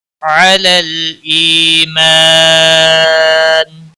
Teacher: علی لام کو ہلانا نہیں، ای یا مدہ ہے، ایک الف کے برابر کھینچ کر پڑھیں گے